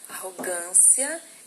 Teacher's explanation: Arrogância é uma paroxítona, né? O gan aqui, que é a sílaba tônica.